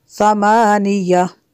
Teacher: تنوین کے بعد ثا حروف اخفا میں سے ہے تو یہاں پہ اخفا ہوگا، اس لیے غنہ کریں گے۔ ثمانیہ والملك على أرجائها ويحمل عرش ربك فوقهم يومئذ ثمانية، ثا کو نرم کریں گے۔